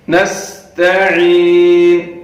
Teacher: سین کو ادا کرتے وقت سیٹی کی آواز نکلنی چاہیے